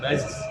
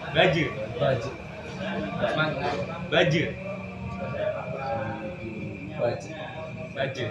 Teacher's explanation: huruf jim kan huruf qalqalah. Dia harus mantul kan. Jadi baju, jangan baz.